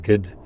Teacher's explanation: long O fronted to E and then raised to I, so you get gid for good